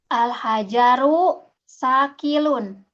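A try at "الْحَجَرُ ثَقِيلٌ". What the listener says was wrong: Sakilun. Ki yang panjang.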